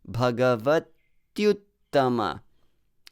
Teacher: chant the verse you should not show that e there because e becomes ya and it is pronounced together with the next o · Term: sandhi